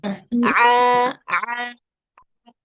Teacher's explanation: Yang betul dia tidak masuk ke rongga hidung. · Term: huruf ain